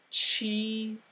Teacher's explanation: when we say ch, you need to put your tongue further forward, closer to the teeth, and that little ch, it sounds like TCH.